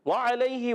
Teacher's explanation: واو کی ادائیگی ہونٹوں کی گولائی سے. وعلیہ، عین ادا ہوتا ہے حلق کے درمیان والے حصے سے.